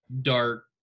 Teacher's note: the transition from the R to the K is very, it's not like a smooth transition